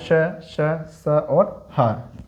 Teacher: इन वर्णों का उच्चारण करते समय श्वास बहुत पतले रास्ते से या बहुत छोटी नलिका से बाहर आती है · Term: ऊष्म व्यंजन